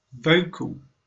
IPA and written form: ˈvəʊ.kəl (Vocal)